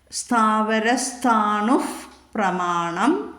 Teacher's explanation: പ എന്ന് വന്നിരിക്കുന്നു അതുകൊണ്ട് അവിടെ ഫ് എന്നുള്ള ഉച്ചരിക്കണം ഉപദ്മാനീയം